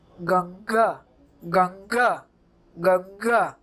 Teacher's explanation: जिसकी ध्वनि केवल नाक से निकलती है उसे अनुस्वार कहते हैं